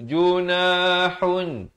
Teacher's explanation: Junahun di sini pula kita samarkan ikhfa hakiki, dua harakat.